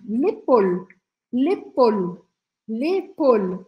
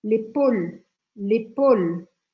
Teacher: lembra que no final das palavras que terminam com e a gente não fala esse E então eu vou interromper o som na consoante anterior no L